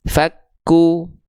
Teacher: pokoknya kalau ada harakat dah simpul angka di atas huruf berarti dibaca dengan vokal u harus monyong harus monyong gitu ya Nah maka di sini pastikan monyong kalau enggak monyong